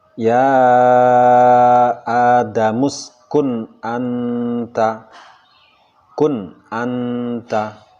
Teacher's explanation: huruf nun pada kun anta ini dibaca idhar, nunnya jelas terdengar suaranya dan tidak samar-samar atau mirip dengan huruf yang lain. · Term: idhar halqi